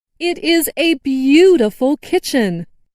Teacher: stressed the word beautiful.